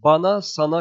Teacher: ince ünlü kalın ünlüye dönüştüğü için bunun adı bir defa ünlü kalınlaşması